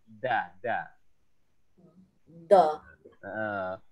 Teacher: Jadi ujung lidahnya menyentuh ke belakang gigi atas nih atau gusi atas. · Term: Huruf dal